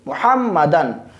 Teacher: नाक में आवाज़ नहीं ले जाएंगे, बल्कि इसको इजहार करेंगे